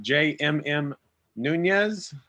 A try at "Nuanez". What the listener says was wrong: Nuanez. It's an extra vowel in there.